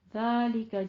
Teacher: ذالکہ نرمی سے پڑھنا ہے، سیٹی کی آواز نہیں آنی چاہیے